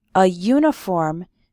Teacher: we say a uniform because uniform starts with a y sound